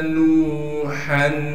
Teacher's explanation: نون کو واو ساکن سے ملائیں گے، واو مدہ بھی ہے تو لہٰذا نون کے بعد واو مدہ ہونے کی وجہ سے نون کو 1 الف کے مقدار کھینچیں گے